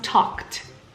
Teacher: P is a voiceless consonant. And because of that, the ED will be pronounced as a T. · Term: T sound